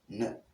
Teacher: the tip of the tongue is in contact with the alveolar ridge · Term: N sound